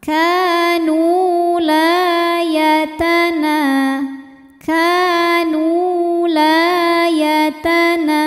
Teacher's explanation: Sebab ada waw sukun yang didahului harokat dhammah. Maka huruf nun ini panjangnya harus sama dengan kaf, yaitu dua harokat. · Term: mad tabi'i zahiri